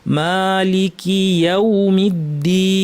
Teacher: ওয়াও আছে, ঠোঁটটা আমাদের সুন্দর গোল করতে হবে। ঠোঁট গোল করতে যদি আমরা আলস্য করি তাহলে আমাদের তেলাওয়াতের মধ্যে পেশগুলো ভুল হবে, ওয়াওটাও ভুল হবে।